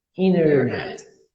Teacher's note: Não tem o T, não é inter, é só inner.